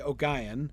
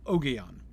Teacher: you could do with a hard G and stressing the first syllable